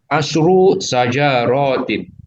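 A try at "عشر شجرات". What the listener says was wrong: Ya, bagus, mantap. Alhamdulillah.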